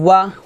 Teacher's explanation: ওয়া দুই ঠোঁট গোল করে ওয়াও জবর ওয়া উচ্চারণ করবেন